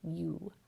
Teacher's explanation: the vowel sound starts with the glide y and then moves into the vowel oo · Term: diphthong